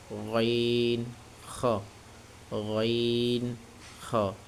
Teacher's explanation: কণ্ঠনালী শেষ হইতে উচ্চারিত হয় এটা একটু মোটা হবেন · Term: তিন নাম্বার মাখরাজ